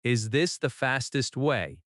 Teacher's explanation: Notice the rising intonation at the end because it is a question.